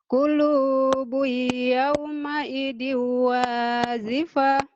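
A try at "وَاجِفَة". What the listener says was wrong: Qulubun yawma idzin wajifah, keras ya. Jangan wazifah, wajifah.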